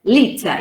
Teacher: in liter, the stressed sound is li and not te.